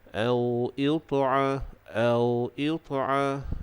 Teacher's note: Bila kita sebut au itu, kita rasa getarannya di dada ni, di dekat dengan pangkal kerongkong. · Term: huruf hamzah